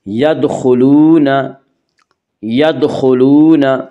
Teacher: خا کو پر پڑھیں گے، خا حروف مستعلیہ میں سے ہے